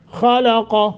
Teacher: خلق لام کو بری کرنا ہے باقی موٹے دونوں